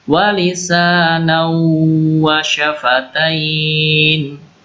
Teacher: Di sini wawu. Jadi idgham bi gunnah, masuk ke huruf wawu dengan dengung.